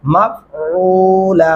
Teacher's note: आइन गले से अदा करेंगे